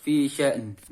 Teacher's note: matikan hamzah, kemudian bunyikan suara n sejenak hanya melewati hidung bukan mulut